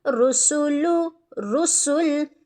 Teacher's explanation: اب یہاں پر دیکھ لیتے ہیں، را ضمہ رو، سین ضمہ سو، رسو، لام ضمہ لو، رسولو، رسل۔ را موٹا، سین باریک، لام بھی باریک، لیکن سین میں سیٹی بھی لے کر ہے